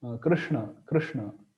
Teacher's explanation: the tongue is touching the upper roof behind palate, behind talu, and this sha is pronounced at the place, the palate. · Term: cerebral sha